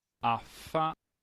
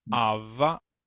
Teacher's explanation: solo se sopla es la F y se hace vibración